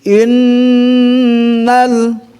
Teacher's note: Dengungnya harus betul-betul mantap gitu kan. Jadi innal ya, masuk kepada al-khayshum kan, rongga hidung. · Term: gunnah musyaddadah